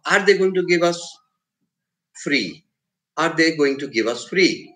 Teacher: that's a rising tone because you are asking a question